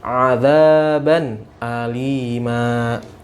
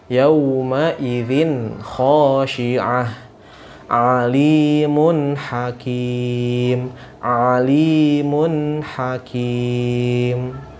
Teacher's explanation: Tanwinnya harus dibaca jelas, ya, dan tidak boleh ada gunnah